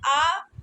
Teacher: आ जो है यह मध्य स्वर है।